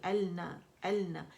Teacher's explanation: اکمل grade کا the most complete longest غنہ ہم یہاں کریں گے، یہ 2 کاؤنٹس کا ہوتا ہے لیکن 2 2.5 3 تک آواز چلی جاتی ہے، آواز سے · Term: غنہ مشدد